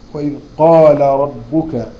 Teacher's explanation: الراء مفخمه لانها مفتوح